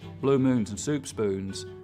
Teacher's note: When I cross the Mississippi, I don't have very fronted goose vowels anymore